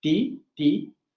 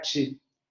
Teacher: si la T aparece ante una I, ti, nosotros sabemos que por evolución lingüística ese ti puede evolucionar a ch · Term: africación